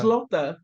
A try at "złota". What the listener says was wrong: Złota. That L with the line through it in Polish is pronounced like a W. Złota.